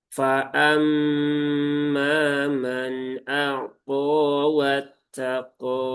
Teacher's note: Ini alif maksurah sudah kita bahas di pertemuan sebelumnya maka cukup dibaca dua harakat dan qaf ini juga termasuk huruf istla. Nah, jadi ketika diucapkan itu dengan cara menaikkan pangkal lidah dibaca dengan tafkhim · qo ya ini panjang dua harakat